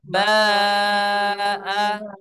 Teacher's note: 5 harakat ya itu setara dengan tiga ketukan irama lamban